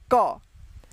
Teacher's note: ये जो है आधा क और अ मिलकर पूरा क बनता है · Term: हलंत